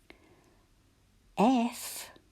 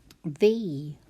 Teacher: our lips tickle a wee bit and the vibration is in our voice box